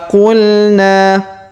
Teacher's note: huruf na kita panjangkan dua harakat ya karena terdapat Alif di depannya